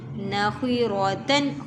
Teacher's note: خوا را دونوں کو موٹا بھرا جائے گا